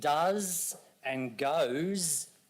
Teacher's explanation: In does and goes, the S actually represents the Z sound.